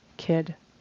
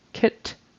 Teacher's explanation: So make sure you get your D versus T correct. D is voiced and not as much air comes out. And T is not voiced and more air comes out.